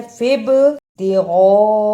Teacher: با پر جزم ہے اس لیے یہاں قلقلہ ہو رہا ہے